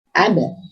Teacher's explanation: berarti ba dari syafatain atau dua bibir